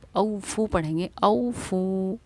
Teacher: हमज़ा वाव ज़बर औ को हम नर्म आवाज़ के साथ जल्दी अदा करेंगे। बहुत से इसको पढ़ते हैं औफू, लेकिन नहीं, वो प्रोनाउंसिएशन सही नहीं है। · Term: हुर्फ़ लीन